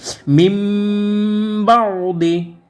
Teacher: নুনটাকে আমরা কি করবো মিম মিমের সহিত গুন্না করে পড়বো মানে নুনটাকে আমরা মিম বানিয়ে গুন্না করব